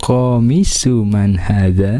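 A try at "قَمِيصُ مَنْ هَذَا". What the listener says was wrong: Betul, komisu man hadha, minya panjang ya. Komisu man hadha.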